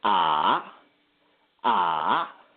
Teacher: the third tone which is more of a dip so if you're using the a sound it'll be like ah · the third tone is a dip tone